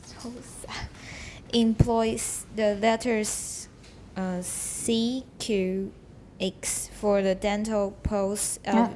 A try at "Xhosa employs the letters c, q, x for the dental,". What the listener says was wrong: Pause, you got a comma there.